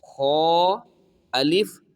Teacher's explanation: آگے دیکھیے شین الف، سین الف، فا الف، قاف الف، جیم الف خا الف. ناظرین یہ جو خا ہے یہ حروف مستعلیہ میں سے ہے، تو اس کو ہم نے پر پڑھنا ہے یعنی موٹا